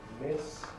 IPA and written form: mɪs (miss)